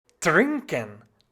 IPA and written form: ˈtʀɪŋkən (trinken)